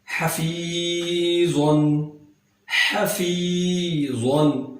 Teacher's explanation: ہا کو درمیان والے حلق سے ادا کیا جائے گا · ساکن ہے اور اس سے پہلے فا کے نیچے زیر ہے، یہاں پر یا مدہ بن گیا، اس کو ایک الف کے برابر لمبا کر کے پڑھیں گے